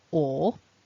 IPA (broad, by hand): ᴐ: